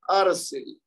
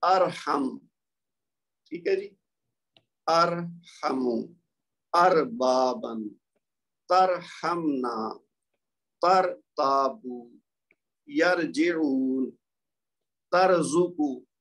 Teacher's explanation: جیسے یہ زبر کی مثالیں دیکھیے ارسل. اب یہاں را ساکن ہے، ٹھیک ہے، لیکن اس سے پہلے جو حمزہ ہے اس کے اوپر زبر ہے تو لہذا را کو موٹا پڑھیں گے